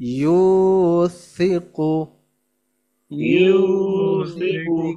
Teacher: তাড়াতাড়ি হবে পাতলা তাড়াতাড়ি এবং আওয়াজটা নরম হবে। নরম জিহ্বার আগে উপরের দাঁতের সাথে লেগে আওয়াজটা নরম হবে